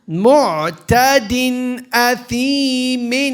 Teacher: We're fully pronouncing that noon sakin. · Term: idhar